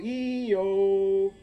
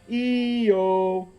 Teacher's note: When you go E-U-O, and then down, just skip out the U and just go from E to O. When you go E-O, your tongue pulls back and drops down.